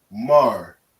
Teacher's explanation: Because the ma and the ra are connected, we say mar. If it wasn't connected, we would say mara.